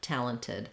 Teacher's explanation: I would want to use the same T I use at the start of words with a little puff of air talented so I don't want to Flap here like um in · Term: T sound